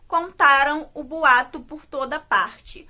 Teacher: está no tempo passado e que tem como sílaba tônica o tá